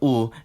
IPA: ʊ